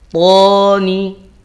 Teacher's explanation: Jadi termasuk to itu isti'la itu dia harus mengangkat bagian pangkal lidahnya.